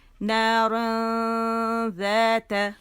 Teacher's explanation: اور اخفا کا یہ کیا میں نے رول بتایا تھا آپ لوگوں کو، کہ ہم کیا کرتے ہیں، حرف اخفا کے لیٹر کے قریب جاتے ہیں، اس کو چھپاتے ہیں. یہاں پہ ہماری جو زبان ہے وہ یہاں نون کے مخرج کو ٹچ نہیں کرتی، بلکہ کیا کرتی ہے، یہاں غنہ کرتے ہوئے ادھر پہنچ جاتی ہے ذال کے مخرج پر